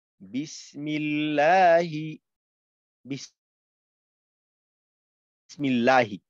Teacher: ডানে জের হলে আল্লাহ শব্দের লামকে বারিক বা পাতলা করে পড়তে হয়।